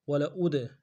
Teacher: حمزہ کو دال کے ساتھ ملانا ہے، دال حروف قلقلہ سے قلقلہ کریں گے